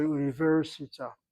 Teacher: U is a long vowel, open syllable. Ni is a long vowel, open syllable. Ver is a short syllable, closed by the resh, assuming it's a svanach underneath the resh. · Sephardic has the tendency to accent the end of the word